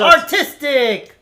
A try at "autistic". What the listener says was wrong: Autistic. You're saying it like your pronunciation sounds like artistic when you say it. Autistic.